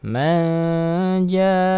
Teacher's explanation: Nun sukun bertemu dengan huruf jim, ikhfa